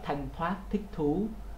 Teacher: khi mà bạn phát âm cái âm thở trong tiếng Việt, thí dụ như là thanh thoát, thích thú, thì bạn thấy hơi nó ra rất là nhiều.